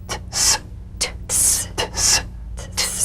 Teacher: The unvoiced tongue point plus blade consonant. Press the tongue against the upper gum ridge for the T drum beat, then crash through with a sharp, soft S.